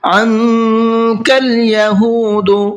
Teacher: عَنكَ الْيَهُودُ، یہاں پر نون ساکن ہے اور نون ساکن کے بعد میں کاف آ رہا ہے، اور کاف بھی اخفا کے حرفوں میں سے ہے، تو یہاں پر بھی نون کے اندر اخفا کر کے پڑھیں گے، نون کی آواز کو تھوڑا سا ناک میں چھپا کر کے پڑھیں گے